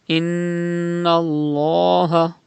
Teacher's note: you can see tashdid on noon, it is noon mushaddad, pronounce with gunna, and there is zabar before the lam of Allah's name, you have to read lam with thicker voice.